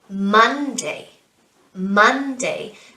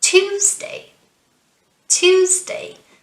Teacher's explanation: so we put the stress on the first syllable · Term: syllable stress